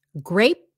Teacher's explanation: it's a stopped p grape and then fruit stop T at the end grapefruit grapefruit